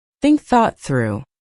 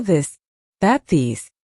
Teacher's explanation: Put your tongue between your teeth and push air out for think. For this, your tongue touches the same position but with your voice turned on.